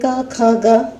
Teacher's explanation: इन्हें बोलने में भी कंठ की मदद लेनी पड़ती है